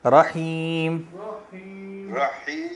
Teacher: جب ہا پڑھیں گے تو وہاں پہ رکنا نہیں ہے، صرف ہا کے آواز ادائیگی کرتے ہوئے آگے نکل جانا ہے، ورنہ وہ شد بن جائے گی